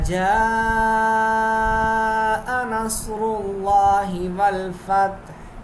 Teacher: الف مدہ دال باریک پڑھی جائے گی، مد متصل. الف مدہ کے بعد حمزہ اسی کلمے کا حصہ ہے، 3 سے 4 سیکنڈ کھینچ کے پڑھیں گے. صاد موٹا پڑھا جائے گا، را پر پیش ہے، را موٹا پڑھا جائے گا، لفظ اللہ کلام موٹا پڑھا جائے گا.